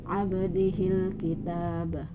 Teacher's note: ab harus melambung walaupun sedikit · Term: Qalqalah Sughra